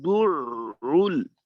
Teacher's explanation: দুরুল শুরুতে খোলা থেকে শুরু হয়ে দালের উচ্চারণের জন্য গোল হবে। তারপর আইনের তাসদিদের প্রথম অংশের উচ্চারণে ঠোঁট খুলবে, তারপর আবার আইনের পেশের জন্য ঠোঁট গোল হবে, আবার লামের জজমের উচ্চারণের জন্য ঠোঁট খুলবে।